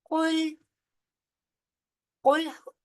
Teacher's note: काफ जो है वो हरूफ मुस्तालिया में से है, लिहाजा मोटा पढ़ा जाएगा। लाम आगे साकिन है, लाम बारीक पढ़ा जाएगा।